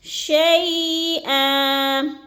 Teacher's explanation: نفس شیئا، شیء میں جو ہے اس کو لمبا بالکل نہیں کرنا کیونکہ ادھر یا لین کی علامت ہے یا ساکن ہے اور اس سے پہلے لفظ پر زبر ہے، یعنی شین کے اوپر زبر ہے، تو ہم نے ادھر اس لفظ کو شیء کو لمبا بھی نہیں کرنا اور جھٹکا بھی نہیں دینا، آرام آرام سے ادا کرنا ہے۔